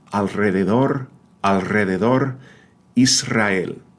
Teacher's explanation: when single letter R, again, letter R, appears in word initial position, like in Rio, rodear, the last name Ruiz, it's always the rolled R.